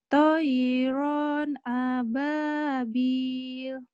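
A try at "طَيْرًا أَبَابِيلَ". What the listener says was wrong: Nah, di sini toiron, ronnya di situ ithar, tidak boleh ditahan. Toiron. Jangan ya. Toiron ababil.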